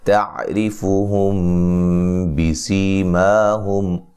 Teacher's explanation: اچھا جی، یہاں تا کو باریک پڑھیں گے، را کو باریک پڑھنا ہے، را کے نیچے زیر ہے، را کو باریک پڑھیں گے